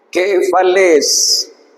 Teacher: en este caso es un acento que sube y baja. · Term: circunflejo